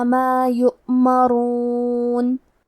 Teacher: وَيَفْعَلُونَ، کلمت یؤمرون میں واو پہ حمزہ ہے اور اس پہ جزم ہے تو ہم حمزہ کو ظاہر کریں گے اور حمزہ کی ادائیگی حلق کے نیچے والے حصے سے ہے۔ حرف را پہ پیش ہے تو ہمیں را کو موٹی آواز میں پڑھنا ہے۔